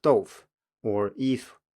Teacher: people who don't even pronounce the vowel sound at all, so the syllable is reduced to only the initial in effect